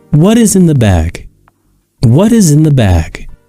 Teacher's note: this question ends in falling intonation meaning that our voice should go down or below at the end of the sentence